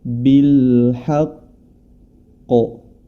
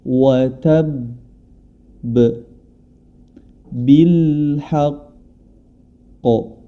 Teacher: Tabbat yada abi lahabin wa tab, wa tab, bil haqqo. Jadi tidak langsung dipantulkan karena dia ada tasjidnya, ditahan terlebih dahulu kemudian baru dipantulkan. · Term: qalqalah di akhir dengan tasydid